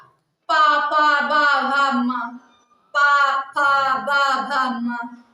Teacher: इनमें सिर्फ ओंठ ही चल रहे हैं, आपस में स्पर्श हो रहे हैं ओंठ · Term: ओष्ठ ध्वनि